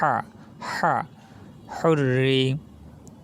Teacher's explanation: হা আমাদের কিন্তু কণ্ঠনালীর মাঝখান থেকে উচ্চারিত হবে